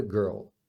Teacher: muita gente tem dificuldade em falar porque junta o som de R com l então você fala girl e depois o l que é o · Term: Dark L